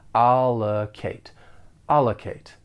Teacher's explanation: the verb has 3 syllables. The stress is on the first syllable, and that second syllable has that unstressed schwa sound.